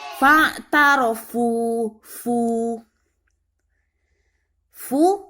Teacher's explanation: hukum bacaannya mat asli atau mat tobi'i, jadi dipanjangkan 2 harokat saja, jangan terlalu panjang